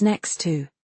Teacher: In phrases like next to, the T in next often vanishes. It becomes next to.